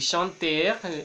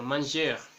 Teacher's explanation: es importante que la R no se pronuncie, a pesar de que nos sintamos tentados a hacerlo